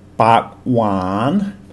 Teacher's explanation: So bak with a low tone means mouth, and wan with a rising tone means sweet.